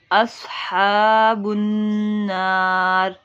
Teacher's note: نون مشدد میں گنہ کریں گے، اصحاب النار، ہا کو 1 الف کے برابر لمبا کریں گے.